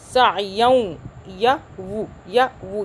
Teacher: को वाव को आपस में मर्ज, सायं या वू, यानी कि दो ज़बर एक ज़बर में तब्दील हो जाएगा और वाव पे गुन्ना आ जाएगा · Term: इदगाम